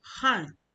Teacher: The a in the h a will be the fourth tone, han.